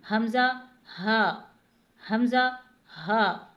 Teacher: حمزہ ہا، آپ سینے پر ہاتھ رکھ کے محسوس کریں گے تو آپ دیکھ پائیں گے کہ یہ دونوں حروف حلق کے اس حصے سے ادا ہوتے ہیں کہ جو سینے کی جانب ہے